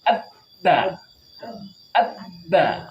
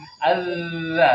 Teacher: kita kasih tasdid maka suaranya akan putus